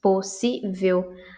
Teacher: ao lermos a palavra colocamos maior força na sílaba ci ou seja acentuamos no sentido de que a destacamos enfatizamos sonoramente · Já as duas outras sílabas, pos e vel, são chamadas de átonas, pois são pronunciadas com menor intensidade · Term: sílaba tônica